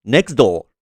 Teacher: This is a classic example of fast linking, where the T sound is omitted from next, making it sound like next.